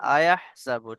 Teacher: হামজার উপর যে টানটা হচ্ছে, টানটা যেন না হয়